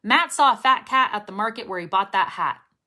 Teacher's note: people are able to perceive and understand the t sound even though you're not releasing it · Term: stop t